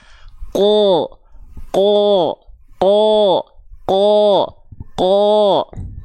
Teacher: ketika makhrajnya itu dilafalkan pangkal lidahnya naik ketika momentum fathah harakat fathahnya keluar pangkal lidahnya tetap naik maka itu yang mengakibatkan keluarnya bunyi vokal O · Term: istila